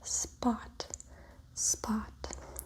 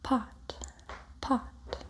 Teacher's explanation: You can feel a little puff of air when you say pot